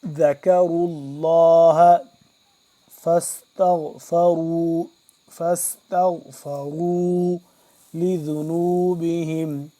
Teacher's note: ذال کو نرمی سے اور کاف باریک را موٹا پر کر کے